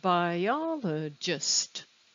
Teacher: it's on the second syllable yeah i can tell because there's a pitch change and it's a little stronger